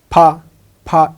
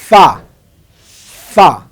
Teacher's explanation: মনে রাখতে হবে ফা উচ্চারণ করতে উপরের 2 দাঁত নিচের ঠোঁটের মাঝখানে লাগবে, তাহলে আমার ফা উচ্চারণ হবে